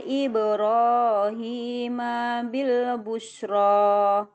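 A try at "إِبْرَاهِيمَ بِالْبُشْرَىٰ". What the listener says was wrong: Banyak pendek. Ulangi dari tuh ya. Ibrahimnya emaknya itu dia pendek. Ibrahim bil busra.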